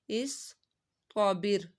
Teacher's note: صاد کی سیٹی بھی نکالنی ہے، موٹا بھی پڑھنا ہے، تو بھی حرف مستعلیہ ہے، صاد بھی، استابر، صاد کی ہم نے سیٹی نکالنی ہے۔